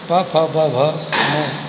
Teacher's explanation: प वर्ग में प फ ब भ में ये ओष्ठ से उच्चारित होते हैं